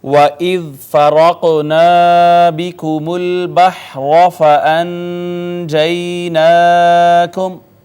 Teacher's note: سب سے پہلے واو ہونٹ گول کر کے ادا کی